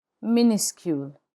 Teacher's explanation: The final S is not pronounced in minuscule.